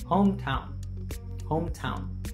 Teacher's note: the second syllable town is pronounced with less stress · In the words hometown, the primary stress falls on the first syllable, home.